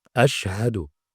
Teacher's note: huruf syin memiliki sifat tafasyi makhrajnya Tengah lidah dengan langit-langit